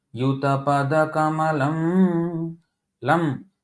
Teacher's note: Lam is Dirgha, but the first 6 are all Laghu. I mean short.